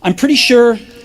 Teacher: I'm pretty sure, rising intonation, because the sentence is not finished yet.